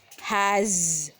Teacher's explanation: as H a s though it has s at last but it produces the voiced sound of Z letter Z has we can feel that our vocal cord it is moving